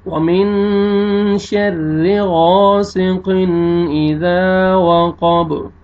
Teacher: را مشدد ہے لیکن را کے نیچے زیر ہے، را کو باریک کریں گے، غین کو موٹا کر کے پڑھیں گے